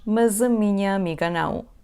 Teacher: Quando temos uma vogal depois da palavra mas, o som sh vai tornar-se em som z.